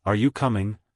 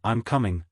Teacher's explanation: are you coming has a rising intonation while I'm coming has a falling intonation